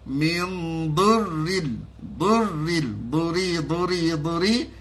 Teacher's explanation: jangan ditebalkan sebab di situ ra tu ra nipis